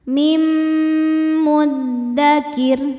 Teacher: Cara bacanya nun dimasukkan atau dileburkan ke mim disertai dengungan. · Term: idgham bi gunnah